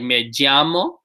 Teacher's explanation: The way I say it is a little bit more of like a J and Y combination